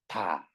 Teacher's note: 디귿은요. 혀끝이 혀끝이 위잇몸에 요렇게 닿아 가지고 준비하고 있다가 다를 발음하려고 할 때 발음하는 순간 다 막았다가 터집니다